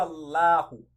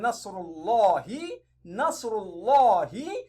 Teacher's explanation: According to the first principle of Ismul Jalala, which is at-tafhim, you read the lamun in Ismul Jalala thickly.